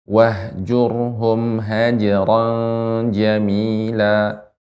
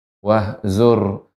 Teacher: pengucapan huruf jim jangan bercampur dengan huruf zai, bukan haziron, akan tapi haji, tengah lidah.